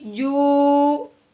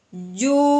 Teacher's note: پہلے ہم نے جیم کو واو کے ساتھ ملانا ہے، پھر اس کو ایک الف کے برابر لمبا بھی کرنا ہے۔ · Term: واو ساکن